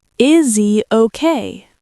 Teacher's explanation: The S of is connects to the E of he.